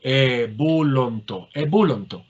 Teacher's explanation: Es onto. En vez de ontai tendremos onto, con el acento en el diptongo.